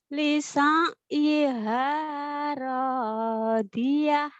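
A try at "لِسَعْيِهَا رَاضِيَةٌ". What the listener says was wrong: Oh, ngedennya malah ke hidung. Lisar, lisaryiha radiyah.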